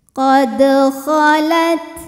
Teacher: Kemudian ada hukum qalqalah sughra karena ada huruf qalqalah yaitu dal yang sukunnya sukun asli dan ada di tengah bacaan kita. Maka dal ini dipantulkan dengan pantulan yang kecil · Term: Qalqalah Sugra